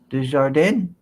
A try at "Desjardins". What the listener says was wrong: Forget the din. Desjardins.